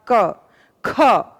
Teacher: ख हमने हवा ज्यादा बाहर की तरफ फेंकी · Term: महाप्राण